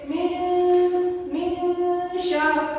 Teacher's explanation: nunnya tersebut masih terdengar, namun dia sedikit lebih samar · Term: ikhfa